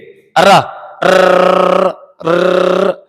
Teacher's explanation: हमारी जीभ बार बार कंपन कर रही है। तो सीधी बार र में लुढ़क रही है एक तरह, ऐसे ऐसे हो रही है। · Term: लुठिंत व्यंजन